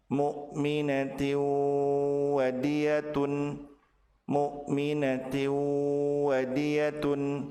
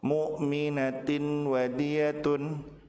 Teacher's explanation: Apabila tanwin bertemu dengan waw, maka tanwin dilebur ke huruf waw, ditahan 2 harokat dan disertai dengan gunnah.